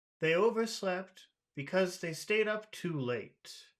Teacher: we'll try to start high and move down to too late